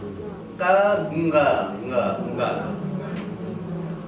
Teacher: The tongue is touching the same place where K or G was pronounced. We are only trying to give a nasal sound. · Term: nasal sound nga